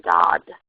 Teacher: But what we'll observe is that a child will do that for every sound, every K sound they encounter, and every G sound they encounter, because the G is also produced in the back of the mouth. So dog can become dod with a D at the end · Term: velar fronting